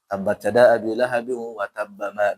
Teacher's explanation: ketika huruf qalqalah tasdid maka tidak dipantulkan